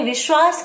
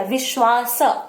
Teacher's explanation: तालव्य उसमें जुड़ा है विश्वास में, और अंतिम जो है स, वो दंत्य स है